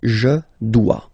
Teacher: OE, when you combine the two, you get the sound wa wa wa.